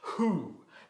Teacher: Es escrita con W, pero se pronuncia con una H aspirada